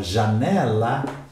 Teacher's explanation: Então, por exemplo, a palavra janela apresenta acento tônico, mas não acento gráfico. A minha voz se eleva na penúltima sílaba.